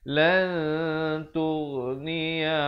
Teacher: kita sembunyikan ataupun samarkan bunyi nunnya di belakang huruf ta dengan kadar 2 harakat. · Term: ikhfa hakiki